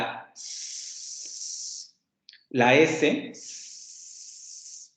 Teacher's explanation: Pero si ustedes producen un sonido como la S, y siguen tocando ahí, se van a dar cuenta que esa vibración no se produce. Porque la S es un sonido sordo. Es decir, en la S no hay vibración de cuerdas vocales.